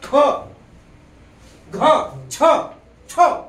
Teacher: ह चा उच्चार पूर्णत्वाने आहे म्हणून यांना महाप्राण युक्त म्हणायचं